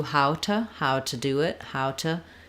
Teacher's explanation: I link these together how to cook first thing is that I reduce the ooh to an uh